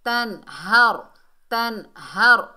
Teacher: نون ساکن کو اخفا غنہ کے بغیر پڑھیں گے، ظاہر کر کے پڑھیں گے۔ تنہر، تنہر، اور را کو پر پڑھیں گے۔ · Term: اظہار حلقی